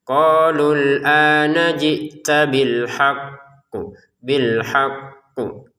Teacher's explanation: ditekan dulu bil haq, kemudian pantulannya kita ucapin setelah itu